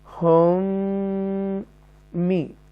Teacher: یہ ادغام شفوی ہے، ڈبل میم آ رہا ہے یہ